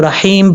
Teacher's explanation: اب حا کے بعد یا ہے، یا ساکن سے پہلے زیر ہو تو یا مدہ ہوتا ہے، ایک الف کی مقدار اس کو لمبا کر کے پڑھیں گے۔ میم کے اوپر 2 پیش ہے، میم 2 پیش من، جب یہاں پہ سٹاپ کریں گے تو رحیم پڑھا جائے گا۔